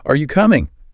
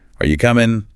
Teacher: But if it goes down, it's more like, are you coming? Almost an order.